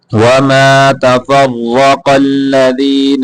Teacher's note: را کو موٹا کرنا قاف کو بھی موٹا کر کے پڑھیں گے